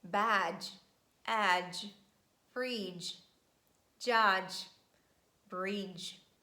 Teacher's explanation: d and j sound together would be too much that's why we just omit letter d in pronunciation and we pronounce j sound instead